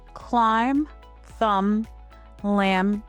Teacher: In all of these words, the B makes no sound at all. The word should end lightly, not with an extra sound. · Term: Silent B